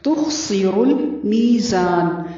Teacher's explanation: تخسر المیزان تا کو باریک پڑھنا ہے، خا کی آواز پر ہوگی اور سین کو باریک پڑھنا ہے، را کو پر پڑھنا ہے. تخسر المیزان.